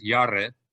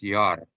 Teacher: no vowel was pronounced with this R after the r sound so it's not yare it's not Yara it's just yar that's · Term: silent Shava